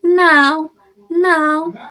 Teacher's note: Lalu ada au. A au pada now. Dari a ke u.